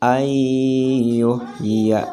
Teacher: cara membacanya harus disambungkan langsung ke huruf idgham bi gunnah